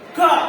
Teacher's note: ನಿಮ್ಮ ಕಂಠ ಭಾಗದಿಂದ ಉಚ್ಚಾರ ಆಗ್ತಕ್ಕಂಥ ಅಕ್ಷರಗಳನ್ನ ಕಂಠಾಕ್ಷರಗಳಂತ ಕರೀತಾರ. ನೋಡ್ರಿ ಕ, ಯು ಆಲ್ಸೋ ಸೇ ಖ, ಖ, ಗ, ಘ.